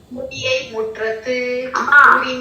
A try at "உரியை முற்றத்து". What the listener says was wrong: மூ அல்லமா உரி. அந்த உரியை முற்றத்து